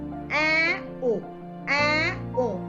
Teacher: for both your tongue will be low or open, that is far from the roof of the mouth